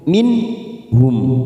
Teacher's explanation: bacaan idhar halqi kita baca jelas tanpa mendengung